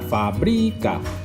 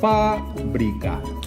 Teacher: porta la síl·laba tònica en l'avantpenúltima síl·laba i seria una paraula esdrúixola. Fàbrica. I ahí sí que hauria de portar l'accent, en aquest cas obert, perquè és la l'accent en l'avantpenúltima síl·laba.